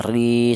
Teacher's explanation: panjangnya mad thabi'i itu satu alif atau dua harakat atau dua ketukan